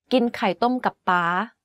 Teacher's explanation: The last word and syllable of this sentence is in high tone. You can hear that it's the only word in this sentence that has a high pitch without a falling tone.